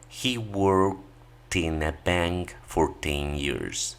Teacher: la mayoría pronuncia el ED y lo vincula o une con el siguiente sonido vocálico.